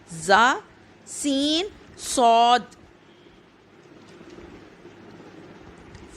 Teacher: جب زبان کی نوک سے اوپر نیچے کے اگلے دونوں دانت آپس میں ملیں اس سے زا سین صاد ادا ہوتے ہیں